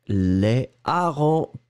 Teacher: c'est un h aspiré donc vous gardez votre article intacte le si vous le mettez au pluriel les harengs pas de liaison entre les deux